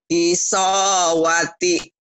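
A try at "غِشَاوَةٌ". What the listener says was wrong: Gisowati. Giso. Bukan giso. Huruf A. Bukan huruf Jawa. Huruf Sunda. Gisha. Bukan giso.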